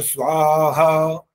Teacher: स्वा वा की आवाज को छोटा मत करो